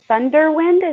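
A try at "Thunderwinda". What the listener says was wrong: Thunder. It's like thunder, but with an A at the end.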